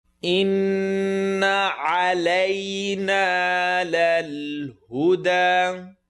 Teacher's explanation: Noon shadda, full nasal sound.